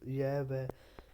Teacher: अर्ध स्वर य व, ये ध्वनियाँ स्वर और व्यंजन के बीच में आती हैं